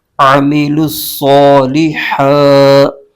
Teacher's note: عین اور حا یہ دونوں حرف حلق کے درمیان سے ادا کیے جاتے ہیں۔ اگر درمیان سے نہ ادا کیا تو عین کی جگہ حمزہ پڑھا جائے گا، ہا کی جگہ ہا پڑھا جائے گا، دونوں جگہ حرف بدل جائیں گے جو کہ بہت بڑی غلطی ہوگی۔